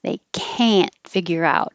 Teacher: The negative can't, you won't hear the T, but I put this over here. If it's negative, you will hear the vowel a because it's stretched. It's always emphasized. Well, usually.